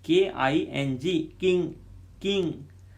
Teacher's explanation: actual g is not pronounced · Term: n g sound